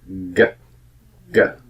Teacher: instead of at the front of the mouth, it's back in the velar area of your mouth, right before the throat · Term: G sound